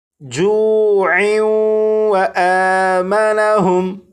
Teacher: اگر اس لفظ پر وقف نہ کرنا ہو بلکہ اس لفظ کو آگے اس لفظ کے ساتھ ملا کر پڑھنا ہو تو پھر یہاں پر تنوین اور تنوین کے بعد واو حروف یرملون میں سے ہونے کی وجہ سے یہاں پر ادغام ہوگا